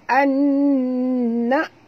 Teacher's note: nun mati bertemu dengan nun, hukumnya wajib dengung idgham ma'al gunnah, dengung dua harakat